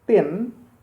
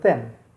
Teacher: T is a plosive sound, meanwhile th is a fricative sound.